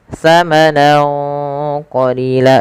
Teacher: Ya, fathatain bertemu dengan huruf qaf, maka di sini ada bacaan ikhfa yang lupa kami tuliskan. Cara membacanya yaitu samarkan suara nunnya kepada huruf qaf awalnya samanan, karena bertemu qaf samanan qalila, dan ditahan dengungannya sepanjang 2 harakat.